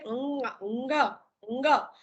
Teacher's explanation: આ અંગ, ય, અણ, ન અને મ એ 5 આપણા અનુનાસિક વ્યંજન છે જેના ઉચ્ચારણ વખતે હવા મુખપથ અને નાસિકા પથ બંનેમાંથી બહાર આવે છે.